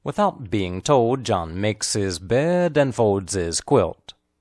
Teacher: And is nearly always quickly pronounced with no D sound.